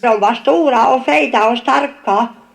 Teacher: there is a secondary stress on the second syllable of the first 3 words. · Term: Accent 2